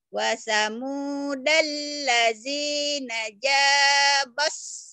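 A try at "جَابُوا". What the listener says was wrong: Jabus. Kenapa jadi jabas? Ini doma. Doma ketukar patah ketukar. Ini jabus.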